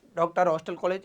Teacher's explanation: उच्चारण इसका हिंदी का आ और ओ, इन दोनों के बीच का उच्चारण है इसका। न तो क्लियर आ पढ़ना है न ओ पढ़ना है। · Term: आगत स्वर